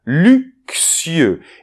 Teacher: la lettre X, dans ce cas-là, va se prononcer comme un K suivi d'un S sourd